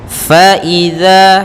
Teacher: Fa idza, hati-hati dalam lafal fa, jangan dibaca pa tapi fa, alirkan nafas kita. Idza, za juga hati-hati, jangan sampai terbaca dengan za tapi dia zal, ya huruf zal, maka za ujung lidah menempel dengan gigi sari kita.